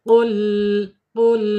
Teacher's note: Kemudian qul ya sama ya lam ya hati-hati lam lam bukan huruf qalqalah jangan sampai mantul harus diinhirafkan